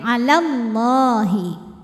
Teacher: namun dibaca panjang dua harakatnya hanya saat berhenti saja ya ala kalau wasal atau terus madnya gugur lamnya Jadi pendek